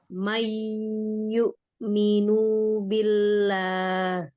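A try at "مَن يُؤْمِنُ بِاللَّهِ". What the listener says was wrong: Nunya masih dibaca panjang, pendek itu.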